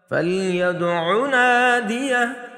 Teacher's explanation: اس دال میں ہم قلقلہ کریں گے یعنی جھٹکے سے پڑھیں گے کیونکہ یہ حروف قلقلہ میں سے ہیں